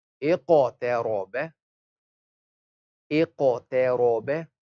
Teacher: Now Hamza is thin, we smile on it. Qaf is thick, we don't smile.